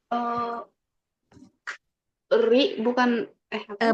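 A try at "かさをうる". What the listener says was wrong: Bukan ri, tapi masih ra, ri, ru, re, ro.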